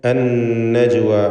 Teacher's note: ഷദ്ദുള്ള നൂനിനെ മണിച്ചുകൊണ്ട് ഉച്ചരിക്കുന്നു. ജീമിന് ഖൽഖല സുഗ്റ നൽകി ശബ്ദം ഹറക്കത്ത് പോലെ ചലിപ്പിക്കേണ്ടതാണ്.